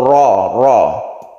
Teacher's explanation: roknya tebalkan memenuhi rongga mulut ya, ro. Kemudian rok kalau berkasro ini tipis, tarqiqan.